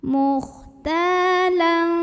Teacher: Mukhtalang, berikutnya ada ikhfa awsat karena ada tanwin fathah yang menghadapi huruf fa, maka tanwin fathahnya dibunyikan samar-samar siap-siap menuju fa disertai dengung. Dengung dan samarnya seimbang karena fa makhrajnya tengah-tengah, tidak terlalu dekat, tidak terlalu jauh dari nun.